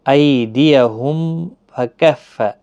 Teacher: میم کے بعد پھا ہے، یہاں پر بھی اظہار شفوی ہوگا، میم کو ظاہر کر کے پڑھیں گے۔